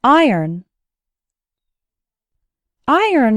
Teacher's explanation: i sounds like in the words item write and kn and the second syllable actually sounds like n